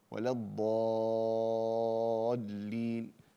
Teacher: ولا الضالين مديها ست حركات